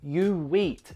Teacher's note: notice another element of connected speech here the intrusive W between you and eat